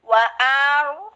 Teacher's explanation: Getarannya tidak boleh banyak-banyak ya. Getarannya cuman 1,5 atau 2 lah paling banyak. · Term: takrir